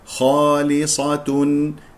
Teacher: الاحرف القمريه خالصه الخاء مفخم مرتبه اولى لان مفتوح بعدها الف والصاد مفخم مرتبه ثانيه